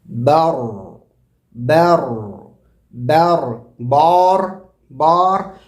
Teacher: رو بھی نہیں بولیں گے کہ آپ اللہ اکبر، برو. ہونٹ گول کر دینے سے ایکسٹرا واو کی آواز یا پیش کی آواز پیدا ہو جا رہی ہے. · با کو باریک کریں گے اور را کو موٹا پڑھیں گے